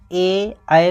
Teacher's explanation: ए ऐ का उच्चारण स्थान कंठताल